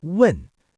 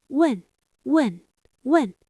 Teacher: Falling tone, like a knife chopping down.